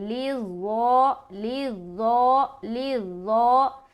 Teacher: ظا کو ادا کرتے ہوئے نا موٹا رکھیں گے لیکن آواز میں سیٹی نہیں آنی چاہیے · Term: موٹا حرف